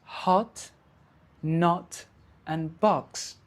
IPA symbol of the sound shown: ɒ